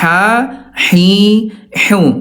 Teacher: dari segi pangkal lidah dua-duanya punya sifat yang sama namanya al-istifal, ya turun pangkal lidahnya tipis